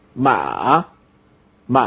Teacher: you first have a falling part and then a rising pad